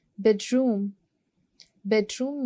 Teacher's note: Bedroom में you'll go for first syllable which is bed.